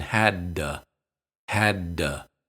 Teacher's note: Be sure to say both D's distinctly. Don't release the first one, just hold it. Then release the second one.